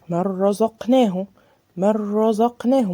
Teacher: ما بينتش النون خالص وما اديتهاش غنة، دخلنا على الراء على طول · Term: ادغام بغير غنة